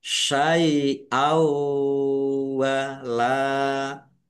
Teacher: bacaan idgham bighunah masuk dengan mendengung, yaitu mendengung wau ditandai waunya ada tasdidnya ditahan biar tampak mendengungnya. · Fathah tanwin bertemu dengan huruf wawu, bacaan idgham bi gunnah. Masuk dengan mendengung, yaitu mendengung wawu